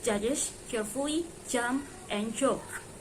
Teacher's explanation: ch and judge j are both post-alveolar affricates, but they differ in voicing.